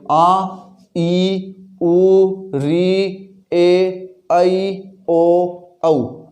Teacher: यानी इन स्वरों को बोलते समय एक मात्रा जितना समय लगता है, इसलिए इनको एक मात्रिक स्वर या ह्रस्व स्वर कहते हैं। और जिन स्वरों को बोलते समय 2 मात्रा जितना समय लगे वे स्वर होते हैं दीर्घ स्वर